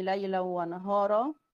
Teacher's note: في هنا تنوين وبعده واو، هيبقى في إدغام. إدغام ناقص، تمام.